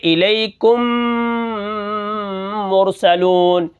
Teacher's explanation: یہ ایک میم پڑھی گئی، میں نے ایک میم کو دوسری میم میں داخل کر دیا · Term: ادغام